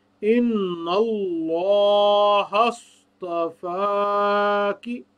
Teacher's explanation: اللہ کے جو لفظ ہے اس کی تفخیم ہوگی، پر کر کے ادا کیا جائے گا